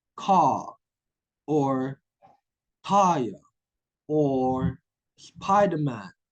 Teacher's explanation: in British English they are not you know sounding the R